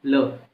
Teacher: और साथ में क्या होता है कि जो वायु होती है जीवा के पार्श्व, जीवा के पार्श्व यानी कि जीवा के बगल में जो गैप मिल जाता है वहाँ से फटाफट निकल जाती है, और जीभ जो है मसूड़े से टच होती है। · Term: पार्श्विक